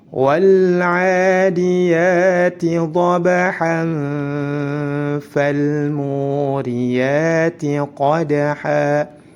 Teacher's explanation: Tanwin bertemu dengan huruf fa, maka dihukumi ikhfa. Jika disambung maka langsung masuk ke huruf fa dan disamarkan disertai dengan gunnah dua harakat. Ya, ditahan dua harakat.